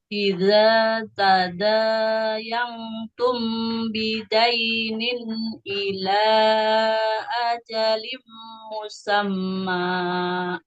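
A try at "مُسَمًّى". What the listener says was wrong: Mimnya kepanjangan Ibu. Ini kalau kita mau di wakaf di situ, dua harokat saja. Nggak boleh lebih dari dua harokat.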